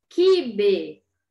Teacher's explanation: Quibe, Q, U, I, mas eu escuto só o som do Q e do I, eu não escuto o som do U